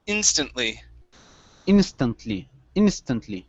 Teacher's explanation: stress is at the very beginning